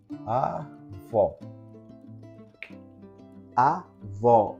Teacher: O O tem timbre aberto